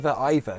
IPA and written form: iðər (either)